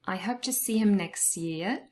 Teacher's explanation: There is elision and the t is dropped, the final t in next year.